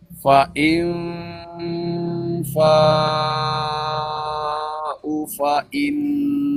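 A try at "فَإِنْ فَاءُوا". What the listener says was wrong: U-nya panjang. U itu huruf mad. Fa'in fa'u fa'in. Nah, kan nggak ada sifir ya. Ya, panjangin.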